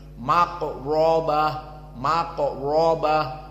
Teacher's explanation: Rah maka dia mufakhamah maka ada dua mufakamah qof dan ro maka di saat kita membacanya tidak datar tetapi mulut kita penuh dan lisan kita seakan-akan berada di atas langit-langit